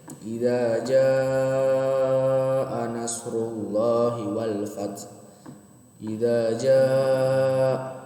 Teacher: situ ja-nya dipanjangkan 4 sampai 5 harokat dikarenakan bertemu dengan hamzah. Kita masuk ke mad jaiz munfasil. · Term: mad wajib muntasil